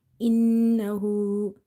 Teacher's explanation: Noon is having nasalization to try to hold the sound into the nose.